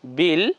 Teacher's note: এজন্য উচ্চারণ কেমন হবে বিল লাম কে ধরে ব এর রশি বি আর লাম এর সঙ্গে লেগে যাবে